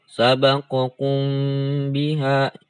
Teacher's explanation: Jadi ada dengung. Jadi samar, enggak jelas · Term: ikhfa syafawi